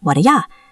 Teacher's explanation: The T in what is a stop T or sometimes it becomes a flap T connecting to the D. The D gets reduced to duh. The U gets reduced to ya. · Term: reduction